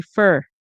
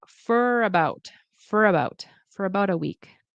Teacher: Notice four for it could be pronounced as 1 2 3 4. But in connected speech to get the rhythm of a native speaker very often they'll pronounce it as fer or fur